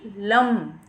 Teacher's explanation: और जैसे आप ल के उच्चार की ध्वनि बोलेंगे तो ल को तो हम नीचे हलंत है तो बहुत जल्दी बोल देंगे, ठीक है। लेकिन ऊपर अनुस्वार है तो उसको हम कैसे बोलेंगे? थोड़ी नाक से भी ध्वनि निकलेगी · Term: अनुनासिक लम